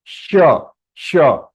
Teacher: Ra भी बोलते हैं तभी the tip of the tongue is touching your murdanya. And sha के समय you have to put your tongue attached to the murdanya and then pronounce.